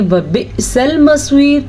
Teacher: اب آپ کو جو حمزہ کے اوپر ساکن نظر آ رہا ہے یہاں پہ ہلکا سا جھٹکا پیدا ہوگا.